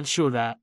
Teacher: Y Shuda siente como comienza ligero. Cómo se intensifica en el centro con ese sh cargado de fuerza y cómo termina no en los labios sino en la garganta.